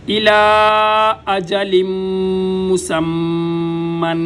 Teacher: ساتھ، الا اجلم مسمن، تینوں جگہ پہ غنہ، الا اجلم مسمن، ایک میم مشدد کا غنہ، ایک تنوین کا غنہ اور ایک میم مشدد کا غنہ